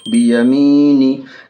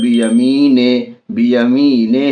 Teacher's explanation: یا ساکین ہے، یا ساکن سے پہلے زیر ہے، یا مدہ ہوگی، یا مدہ کو تھوڑا کھینچ کر پڑھیں گے بیمی، نون زیر نی، نون کے نیچے زیر ہے، زیر کو جلدی پڑھیں گے، تھوڑا بھی نہ کھینچیں گے، زیر کی آواز نیچے کو جاتی ہے۔ معروف پڑھیں گے، مجہول آواز سے بچیں گے